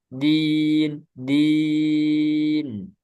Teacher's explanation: Dal jangan sampai ada udara karena jahar tidak ada udara tertahan udaranya